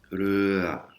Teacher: Alors, le son R, c'est pas un re comme dans notre langue. Le son re n'existe pas en thaï, c'est un R roulé comme les Espagnols.